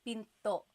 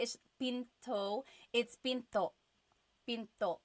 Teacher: Do you hear the glottal stop when I say pinto?